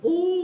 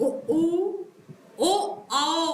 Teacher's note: की स्थिति कैसी बन रही है गोलाकार बन रही है यानी हमारे ओट गोलाकार आकृति ले रहे हैं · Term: वृत मुखी स्वर